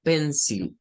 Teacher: Esa I se convierte en un schwa.